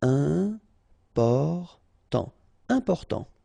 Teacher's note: you've got this EM, and after that it's a consonant, so it is here nasal